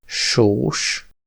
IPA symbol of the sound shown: ʃ